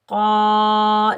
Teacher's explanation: बिअस्माइहिम, क़ाफ के ऊपर ज़बर, आगे अलिफ खाली है, ये अलिफ मद्दा है, इसको हम 1 अलिफ की मिकदार खींच कर अदा करेंगे। क़ाफ को हम मोटा पढ़ेंगे क्योंकि क़ाफ हरूफ़े मुस्तअला में से है।